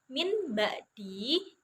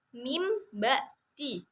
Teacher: Lalu yang selanjutnya yaitu contoh bacaannya huruf iklab itu kalimatnya yang pertama itu ada min ba'di, tapi cara membacanya karena iklab itu kan ada nun mati ya bertemu dengan huruf ba. Cara membacanya itu nun matinya diubah menjadi atau ditukar itu menjadi mim sukun, yaitu dari min ba'di dibaca mim ba'di. · Menukar dari bunyi huruf nun mati atau nun sukun atau tanwin fathah, tanwin kasroh, tanwin domah itu bunyinya ditukar menjadi bunyi huruf mim sukun lalu dibacanya dengan cara mendengung